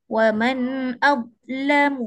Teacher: setengah orang dia buat hilang terus suara dha